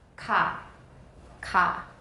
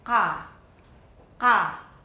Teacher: This is a velar sound. Ka. Ka. Now this is a sound that's further back.